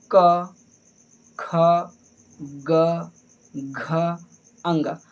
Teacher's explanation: हमारी ये जो आवाज़ें निकल रही हैं कहाँ से निकल रही हैं, कंठ से निकल रही हैं। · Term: का वर्ग